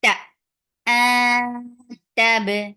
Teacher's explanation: There's qalqala on ba. Ta, very sharp sound.